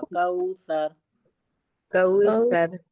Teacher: زبان کو آپ اوپر کے دانتوں کے کنارے سے لگا کے سا ادا کریں گی تبھی سا ادا ہوگا.